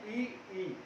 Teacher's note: हमारे जो जीवा का अग्र भाग है, हमारे जीव का जो अग्र भाग है वह ऊपर की ओर स्पर्श करेगा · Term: अग्र स्वर